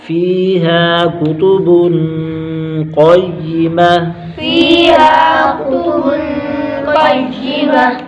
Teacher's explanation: فیہا، فی پر یا مدہ، ایک الف کھینچیں گے، ہا پر الف مدہ، ایک الف کھینچیں گے، کاف کو باریک کریں گے، مستعلیہ کا مستفیلہ کا حرف ہے۔ کتب، بن پر اکفا ہوگا، غنہ کر کے پڑھیں گے۔ قیمہ، قاف موٹا، مستعلیہ کا حرف، تا کو وقت کی صورت میں ہا سے بدل دیں گے، ہا کی آواز نکالیں گے۔